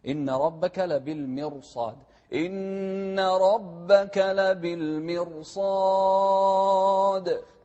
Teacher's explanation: هني الراء ساكنة وقبلها مكسور، لكن اللي بعد الراء حرف مفخم وهو الصاد، فهني خارج عن القاعدة الراء، فإحنا نفخم الراء هني.